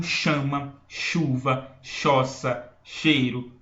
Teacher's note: é um Dio são duas letras mas eu tenho um som o h não tem som eu na verdade eu modifico o som do c e ele vira um som de X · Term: dígrafo